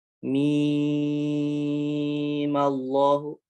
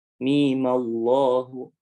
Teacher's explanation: jadi yang pertama mimnya dibaca 6 harokat. Mim Allahu. Cara yang kedua mimnya cukup 2 harokat aja.